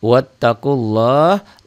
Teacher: lafad Allahnya dibaca tebal tafhim karena sebelum lafad Allah baris di atas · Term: tafkhim